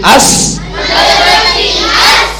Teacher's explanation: سین کو سیٹی کے ساتھ پڑھنا ہے